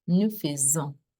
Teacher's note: when you have an S in between vowels, it changes the S sound to Z. So that's it, nous faisons, okay?